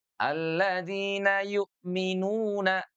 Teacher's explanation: yukminuna itu jelas sekali ada jedanya ya